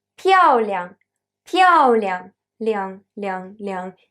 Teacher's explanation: 亮 is quieter, is shorter. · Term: light tone